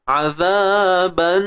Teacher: Dengung kadar dua harakat, dengung sempurna, jangan malu-malu. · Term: Wajibul gunnah